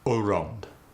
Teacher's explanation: the ow sound occasionally goes to the long O sound. Like around goes to Around.